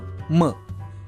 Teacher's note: म हे व्यंजन अनुनासिक देखील आहे कारण याचा उच्चार करताना ओठांसोबत नाकाचाही वापर होतो